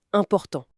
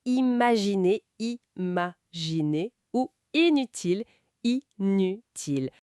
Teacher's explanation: ça se prononce en deux temps, i puis n comme dans imaginer